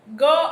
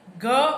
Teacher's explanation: ગ અલ્પપ્રાણ, ઘોષ, કંઠ્ય વ્યંજન છે. ઘ મહાપ્રાણ, ઘોષ, કંઠ્ય વ્યંજન છે